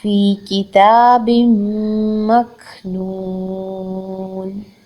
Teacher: کاف ساکن ہے، نون پیشوا نون، یہاں پر ہم اس کو دو حرکت لمبا کریں گے، مد اصلی بالواو ہے، اور جب ہم نون پر سٹاپ کریں گے تو ہم اس کو 6 حرکت تک طول لے دیں گے